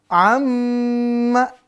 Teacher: Mim nun bertasydid, maka dibaca dengung 2 sampai 3 harokat.